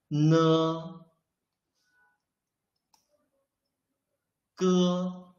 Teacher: you can clearly feel that the root of your tongue is blocking the airflow